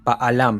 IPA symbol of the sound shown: ʔ